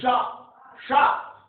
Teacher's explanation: तालु से जीभ स्पर्श करके उच्चारण होता है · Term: तालब सा